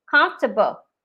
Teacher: so for comfortable the first letter o is a schwa